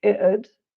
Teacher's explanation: And the t might be glottalized, so it might sound like it'd.